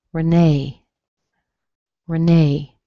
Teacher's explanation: R-E-N-E-E for women. You don't hear the first E, you hear a schwa.